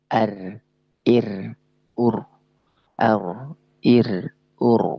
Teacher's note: Yang ro ini bersifat takrir. Nah, ro ini benar-benar keluarkan sifat takrirnya, sifat bergetarnya ya.